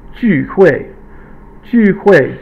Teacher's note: 聚 is fourth tone, falling tone, 会, fourth tone or falling tone